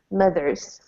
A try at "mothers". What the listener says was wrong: And now give me a little bit more of this TH sound here. Mothers.